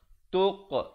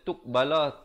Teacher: ada pantulan di sini qalqalah. Kalau baca tuqbala tu tak betul.